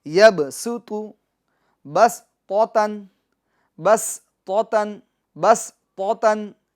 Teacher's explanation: सुतु सीटी ज़्यादा है इसमें और बारीक है। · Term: सीन